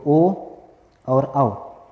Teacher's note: ओ और औ इन दोनों का जो उच्चारण होता है वो कंठ प्लस ओष्ठ दोनों से होता है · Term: कंठ्योष्ठ ध्वनि